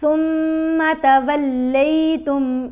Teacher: جب غنہ کریں گے تو آواز ناک میں جائے گی، ایک حرکت کے برابر ٹھہر کر اس کو ادا کیا جائے گا. ثم، لیکن ثم نہیں پڑھنا، میم کو لمبا نہیں کرنا.